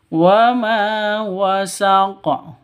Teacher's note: Wa ma panjang 2 ketukan karena ada alif diawali dengan fathah atau alif sebelumnya itu berharokat fathah, begitu. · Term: mad asli